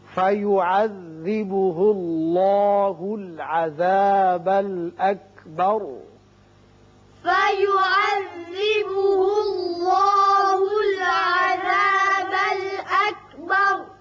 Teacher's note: اللہ کا لام پر ہوگا اس لیے کہ پیچھے پیش ہے